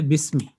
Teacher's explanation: اگر صوتی اعتبار سے تلفظ کے اعتبار سے ہم اس کو بسمی پڑھیں گے یعنی الف کو یہاں پہ ہم حذف کر دیں گے